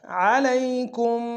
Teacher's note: علیہ میں یا لین ہے، بغیر کھینچے پڑھیں گے، کم کو میم ساکن میلتن کی میم کے سامنے آنے شدہ زور دیں گے۔